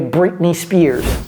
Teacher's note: Avaler le T, ça donne Britney.